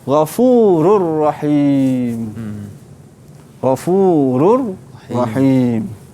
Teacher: Bila kita membaca tanpa gunnah, kita perlu berhati-hati supaya suara kita tidak naik ke hidung. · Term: idgham bila gunnah